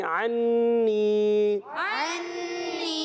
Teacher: मगर ऐन अदा होता है हलक के दरमियान वाले हिस्से से नून मुशद्दद एक अलफ का गु्ना होगा · ऐन अदा होता है हलक के दरमियान वाले हिस्से से नून मुशद्दद एक अलफ का गु्ना होगा यहां पर भी अन्नी